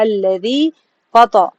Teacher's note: تا کو موٹا پڑھنا ہے. فطرا را کو بھی موٹا پڑھنا ہے.